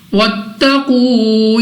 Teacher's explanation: یہاں پہ ہمارے پاس قاف مستعلیہ میں سے ہے، موٹا پڑھیں گے منہ اور آواز کو کھول کر۔ واو ساکن سے پہلے پیش واو مدہ 2 سیکنڈ تک کھینچ کر پڑھا جاتا ہے۔